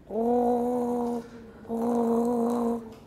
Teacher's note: i can make a velar trill with rounded lips